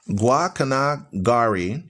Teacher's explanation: with the stress on the last syllable